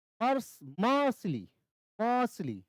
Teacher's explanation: तो म पे ज्यादा जोर आ रहा है